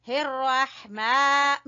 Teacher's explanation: یہاں پر ہم را کو پر پڑھیں گے، رح، اور ہا کو وسط حلق سے